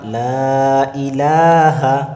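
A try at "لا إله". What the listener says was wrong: লা আবারও টান দেন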